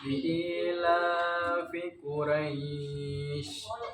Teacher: Dibaca panjang 6 harokat.